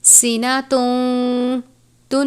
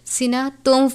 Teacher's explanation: تنوین کے بعد واو مشدد ہے، تنوین کو واو مشدد سے ملا کر غنہ کر کے پڑھیں گے کیونکہ ادغام کا قاعدہ لگتا ہے۔